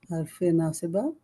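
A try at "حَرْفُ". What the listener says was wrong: Harfu, because we're not gonna say harfi or harfa. We are starting a new thing, right? And basically the beginning of. So you're gonna say harfu nasi ba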